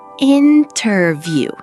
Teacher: The stress is on the first part, in.